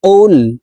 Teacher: কফের উচ্চারণ জিহ্বার গোড়া তার বরাবর উপরের তালুর সঙ্গে লাগাইয়া উচ্চারণ করে পড়তে হবে